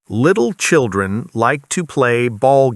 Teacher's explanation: You switched between the light and dark l sounds.